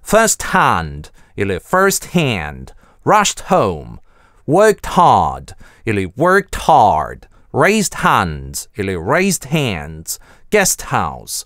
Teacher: /t/ /d/ не любят исчезать перед /h/